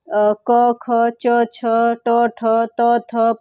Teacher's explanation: अघोष व्यंजन है। प्रत्येक वर्ग का प्रथम और द्वितीय वर्ण जो होता है वो अघोष होता है।